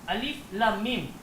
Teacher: So mim yang pertama ni kita masuk dalam mim yang kedua. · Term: idgham